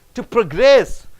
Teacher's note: When you stress on gress, it becomes verb.